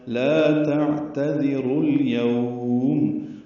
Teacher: رو واو مد ہے، لیکن آگے الیوم کا حمزہ عارضی ہے، اس لیے رو کو لام سے ملا دیں گے، اظہار قمری ہوگا، لا تعتذروا اليوم۔